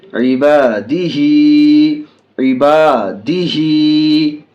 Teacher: الف بھی ہا بھی دونوں کو کھینچیں گے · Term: کھڑی زیر